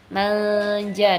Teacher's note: nunnya disamarkan berjumpa dengan ja begitu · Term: ikhfa